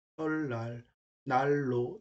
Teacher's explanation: 니은 리을 또는 리을 니은. 그건 결국은 니은 앞뒤에 리을이 있으면 그 니은이 리을로 발음된다고 그 뜻입니다. 예를 들어 설날 하고서 리을하고 니은이 만났잖아요.